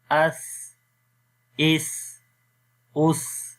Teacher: تو یہ سانس کا جاری ہونا یہ ہمس کہلاتا ہے، جو ان حروف کی صفات میں سے ہے۔